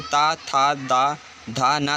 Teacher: और ता से लेकर ना तक ये सब दंत से उच्चारित वर्ण है। ता, था, दा, धा, ना, ये सभी दांत की सहायता से बोले जाते हैं।